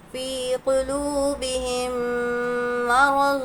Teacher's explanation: میم ساکن کے بعد میم ہے، تو غنّے کے ساتھ ہم کو ملا کر پڑھیں گے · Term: ادغام شفوی